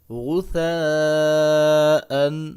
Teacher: یہاں پہ غین ہے، غین کو موٹا کر کے پڑھیں گے. آگے سا زبر الف مد سا ہے تو اس کو 3 سے 4 الف کے برابر لمبا کریں گے